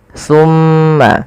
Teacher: ketika kita melafalkan thumma, usahakan kita menahan suara mimnya, thumma, dan harus hati-hati di dalam melafalkan sa.